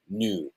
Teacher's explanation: British people say neuro, new, which is a tense vowel that is long